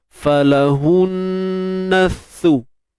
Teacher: Huruf sa ni jangan lupa keluar hujung lidah sikit tuan-puan